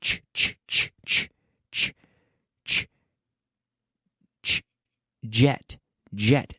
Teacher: The J sound is essentially a vocalized or voiced CH sound. So what we do is we say ch, ch, ch, ch, ch, ch, ch, jet, jet.